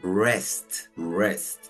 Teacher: La W es muda y nos queda una sílaba cerrada porque termina en consonante y damos el sonido cerrado de la E, más parecido al español